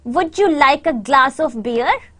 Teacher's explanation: your stress is on the word beer and glass